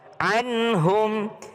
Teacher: Nun ketemu dengan ha tidak berdengung. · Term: Izhar